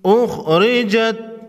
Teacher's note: خا کو موٹا پڑھیں گے، حروف مستعلیہ میں سے ہے، را کو باریک پڑھیں گے، را پر زیر ہے